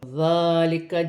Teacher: ذال نرمی والا حرف ہے، کھڑی زبر ہے، 1 الف کی مقدار کھینچ کر پڑھا جائے گا. الف سے پہلے زبر ہے، الف مدہ بن رہی ہے، بڑی مد بھی ہے، مد متصل 6 الف کی مقدار تک کھینچ کر پڑھا جائے گا.